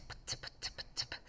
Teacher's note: you can kind of put your hand in front of your mouth and go t, p, and you feel the puff of air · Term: plosives